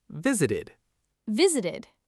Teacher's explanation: If the verb ends in a T or D sound, like visit, we can't just add a T or D without a vowel, or it sounds like a tongue twister. So we add an extra syllable, id.